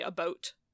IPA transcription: əˈbʌut